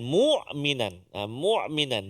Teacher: jangan tolak ke tengah mu, mesti dipangkal mu hamzah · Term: huruf hamzah